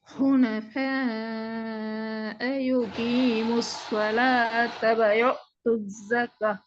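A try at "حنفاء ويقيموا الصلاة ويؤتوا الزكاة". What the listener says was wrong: வாவோட sound இப்ப வரல. ويقيم الصلاة.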